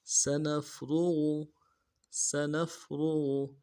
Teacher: سین کی سیٹی باریک ہوگی، نون کو فا کے ساتھ ملانا ہے. را کو موٹا ادا کریں گے، غین کو موٹا ادا کریں گے.